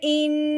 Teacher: हमज़ा नून ज़ेर इन, ये जो हमने इन किया है ना, अपनी ज़बान को ऊपर वाले मसूड़ों पे साथ लगाते हुए हल्का सा लंबा किया है, तो ये गुन्ना है, ठीक है।